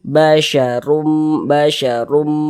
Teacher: Jadi huruf roh itu kalau dia memiliki tanda baca dhammah, memiliki harokat dhammah atau dhammatain, maka huruf rohnya dibaca tabkhim, dibaca tebal. Pangkal lisan kita naik terangkat ke atas ketika kita menglafazkannya, mengucapkannya.